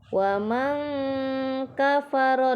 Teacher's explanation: Kemudian di sini terdapat bacaan huruf ikhfa, yaitu wa man kafara, nun sukun bertemu huruf kaf, dibaca ikhfa hakiki